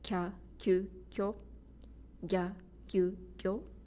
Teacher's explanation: these syllables are of equal beats, so they are kya, kyu, kyo, gya, gyu, gyo, and they don't become longer